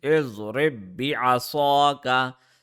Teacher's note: Since ba has a tashdid, we will press it also for half a second.